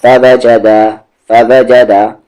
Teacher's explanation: نہ فا کو نہ وا کو نہ جا کو نہیں کھینچیں گے دال کو ذرا سا کھینچیں گے دو حرکت کے ایکول کیونکہ الف ہے اس کے ساتھ